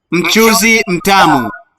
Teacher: So this M prefix is a syllable of its own. Mchuzi, 3 syllables.